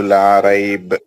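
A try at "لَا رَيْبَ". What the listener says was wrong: देखो सर, आपने पढ़ा ला राइब, पढ़ा आपने। इसमें आपको अगर हम रोकेंगे, आप तो रुक गए ना उधर सर, तो इसको आप फिर मद आरिस, मद लीन आरिस भी होगा।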